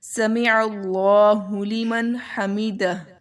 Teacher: یہاں پر اظہار کا قاعدہ اپلائی ہوگا کہ نون کی آواز کو واضح کر کے پڑھنا ہے